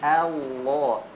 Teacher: huruf lam di lafzul jalalah tebal